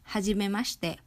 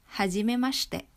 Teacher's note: notice that the I in the shi syllables become silent